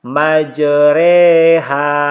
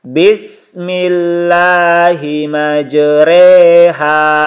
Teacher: Cara membacanya itu fathah yang dimiringkan ke kasrah dan alif yang dimiringkan ke ya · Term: imalah